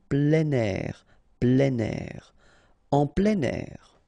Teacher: and then we tend to make the liaison plein air